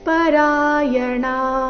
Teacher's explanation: ಮೃತ್ಯುಂ ಶ್ರುತಿ ಪರಾಯಣಾಹ ಮೃತ್ಯುಂ ಶ್ರುತಿ ಪರಾಯಣಾಹ ಇಲ್ಲಿ ಪರಾಯಣಹ ಈ ರೀತಿ ಬೇಡ ಣ ದೀರ್ಘ ಹೇಳಿ ನಂತರ ವಿಸರ್ಗದ ಉಚ್ಚಾರಣೆ ಹೇಳಬೇಕು